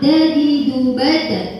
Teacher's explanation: ujung lidah itu nempelnya di antara gigi dan langit-langit. Jadi bagian depan ya, bukan tengah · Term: huruf dal